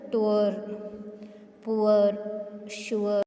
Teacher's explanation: இது வந்து ஊல ஆரம்பித்து ஆல வந்து முடியுது.